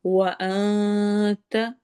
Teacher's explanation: دیکھنا ہے کہیں آپ اس کو انتا تو نہیں پڑھے، ان زبان کو نیچے نہیں لگانا، درمیان میں رکھیں گے، جس میں نون کی آواز چھپ جائے